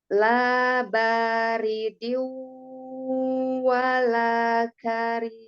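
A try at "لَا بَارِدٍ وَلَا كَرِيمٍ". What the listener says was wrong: Masih agak ketahan ya, nanti bisa lebih dikeluarkan lagi.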